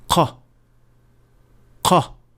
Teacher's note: The difference with qaf is that it is a little bit deeper into the mouth, as it is only touching the soft palate, and the sound is produced at that point.